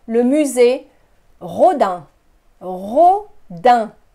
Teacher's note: Notice I don't pronounce the second E.